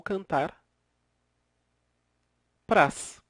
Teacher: eram dois as que se fundiram e acabou ficando uma a apenas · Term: crase